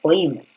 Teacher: donde la fuerza de voz está en la I. Y si la fuerza de voz está en la I, por regla de hiato, obviamente esa I es la acentuada.